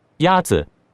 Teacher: The first tone is a high, level tone.